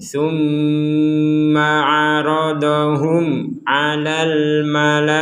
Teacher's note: Al asma'a kullaha thumma 'aradahum. Mim bertasdid, kita baca dengung.